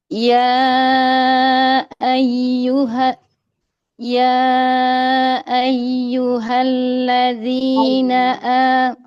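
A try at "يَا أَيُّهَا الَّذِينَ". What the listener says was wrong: Domanya mau sedikit lagi dimajukan, nah, biar sempurna itu mamul harokatnya.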